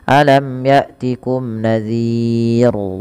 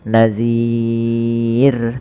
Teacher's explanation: Nah, kemudian lafal ro terakhir ini, ro-nya dibaca dengan tipis, kita kenal dengan istilah ro tarqiq. Maka jangan sampai dia menebal huruf ro-nya.